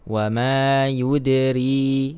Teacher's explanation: huruf dal berharakat sukun, maka kita baca dengan mengeluarkan sifat qalqalahnya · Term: huruf qalqalah